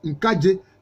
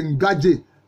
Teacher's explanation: vous voyez bien que le K est allophone du G. Au lieu de Ngadje, comme cela se dit dans la baie, c'est devenu Nkadje chez les Haché.